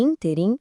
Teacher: E se a sílaba forte é a antipenúltima, como em interim, temos uma proparoxítona. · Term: pró-paroxítona